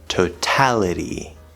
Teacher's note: at the end of the word totality we have a weak t sound between two vowels